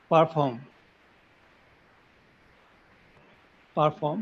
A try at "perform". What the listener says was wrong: So what was happening in the sentence was you were saying par. The par sound was coming. Par form, And I can understand that this is a mother tongue influence from Bengali, I guess.